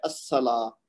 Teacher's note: الصلاۃ میں بھی صاد کو ڈائریکٹ ہم نے الف سے ملا دیا، لام نہیں بولا